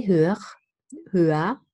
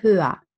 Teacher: We see that there is an R, but I don't pronounce that R. It's in final position, so I replace it by a deep schwa.